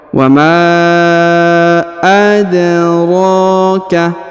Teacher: Ya, jadi huruf ma dipanjangkan 5 harokat ya. Huruf dal berharokat sukun, maka kita pantulkan atau qalqalahkan.